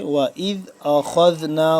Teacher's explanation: خا کو ہم پڑھیں گے موٹا کر کے اور دال کے ساتھ جب ملے گا دال کو ہم پڑھیں گے نرمی سے